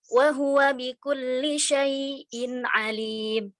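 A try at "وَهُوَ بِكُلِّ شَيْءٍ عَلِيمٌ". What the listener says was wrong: Saktanya belum maksimal saktanya. Ulang. Wa huwa bikulli, ulang. Wa huwa bikulli syai'in alim.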